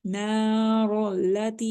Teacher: ती को हम स्ट्रेच कर रहे हैं, आगे या मद्दा है